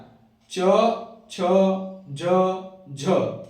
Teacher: च छ ज झ, इसका उच्चारण तालु से होता है ना। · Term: तालव्य व्यंजन